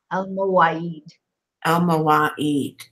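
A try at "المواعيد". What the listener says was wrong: Make that L a little stronger. Al-Mawaid.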